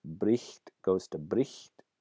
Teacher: the consonant represented by the gh is lost completely. In other environments, in other cases, that fricative is not dropped completely, but rather changed to a different fricative, to an F sound.